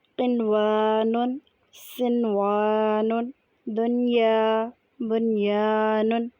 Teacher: نون کو صاف صاف اور بغیر غنہ کے ادا کیا جائے تو اسے اظہار مطلق کہتے ہیں۔